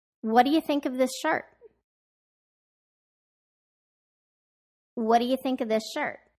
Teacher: Notice how in these WH questions, my intonation goes down at the end of each question